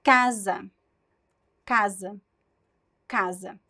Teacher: the stress is the first syllable and the S sounds as a clear z sound